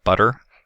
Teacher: So the T sound in butter is our alveolar flap sound that we have used some in transcription.